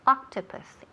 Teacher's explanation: En la primera sílaba, pues recae el énfasis.